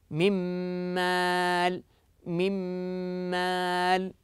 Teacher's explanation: فقد جعلت النون ميما لماذا لاننا ادخلنا النون في الميم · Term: الادغام